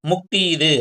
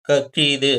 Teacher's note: ஆயுத எழுத்து தன்னுக்குரிய அரை மாத்திரையிலிருந்து 1/4 மாத்திரை அளவு குறைந்து ஒலிக்குது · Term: ஆயுத குறுக்கம்